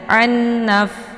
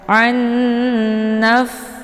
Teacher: Nunnya dimasukkan ke dalam nun yang bertasydid dengan cara ditahan, ya, bacaannya sehingga terbentuk suara yang mendengung. An, ya, jadi jangan langsung dilepaskan. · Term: idgham bi ghunnah